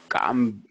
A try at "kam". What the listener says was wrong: Il n'y a pas de coup de glotte ici. Kam. C'est pas u, c'est ou. Ou.